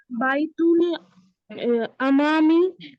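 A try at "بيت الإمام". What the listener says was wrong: এই আলিফের নিচে হামজা থাকলে কখনো জবর বা পেশ হয় না জের হয় বাইতুল ইমামি ইমামের বাড়ি খলফাল মসজিদের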